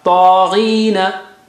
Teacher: Ta is very thick and high. Very thick and high.